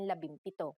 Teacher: If a P follows the NG connector, the NG becomes an M, just like in labimpito.